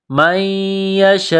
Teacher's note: یہ لمبی مد ہے، 4 الف کے لیمٹ میں کھینچنا ہے